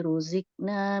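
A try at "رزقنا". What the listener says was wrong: Iya, punten huruf yang qalqalah itu punya kedudukan standar sama dengan bunyi huruf yang berharakat. dibunyiin qa-nya. Iya, jangan ruzikna, ruziqa.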